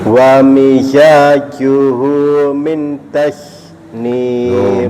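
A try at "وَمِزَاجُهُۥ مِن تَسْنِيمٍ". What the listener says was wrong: Minnya salah, dengung Bapak. Wa mizajuhu tasnim, min tasnim. Jangan langsung berubah eng, nggak boleh berubah eng, itu nggak boleh. Nah, kalau minta salah ya, hilang itu n-nya tetap ada, tapi apa? Nggak samar-samar ya, namanya jaifah, nggak kelihatan jelas juga nggak hilang. Wa mizajuhu min tasnim.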